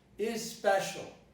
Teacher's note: Some of my students would not produce the initial E here, which is pronounced as a neutral vowel of the type special.